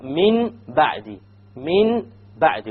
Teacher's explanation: We change the Noon into a Meme, and we perform a Ghunna on it. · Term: iqlab